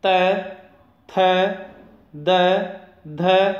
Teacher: फिर दंतः, जिन वर्णों के उच्चारण में जीभ स्पर्श करे वे दंत्य वर्ण कहलाते हैं। जब हम त थ द ध इन वर्णों का उच्चारण करते हैं तब हमारी जीभ दांतों को स्पर्श करती है, इसलिए ये वर्ण दंत्य कहलाते हैं।